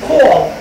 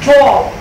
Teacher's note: this is a long vowel sound, this is also back vowel sound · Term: O sound